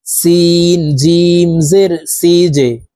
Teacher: জিম কলকলার হরফ, নিচের দিকে ধাবিত করে ধাক্কা দিয়ে উচ্চারণ করতে হবে।